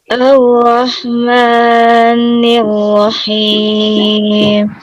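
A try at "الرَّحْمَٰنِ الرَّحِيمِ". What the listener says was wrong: Bismillahirrahmanirrahim kan 2 harokat ya. Nah pas Ar-Rahmanir-Rahim ma-nya jadi panjang banget, lebih dari 2 harokat.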